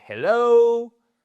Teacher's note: the stress is on the second syllable. Once again, this is absolutely necessary to stress the right syllable.